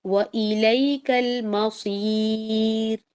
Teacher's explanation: صرف صاد میں آپ کو موٹا کرنا ہے، را میں موٹے والا فیس نہیں بنانا ہے، باریک والا فیس بنانا ہے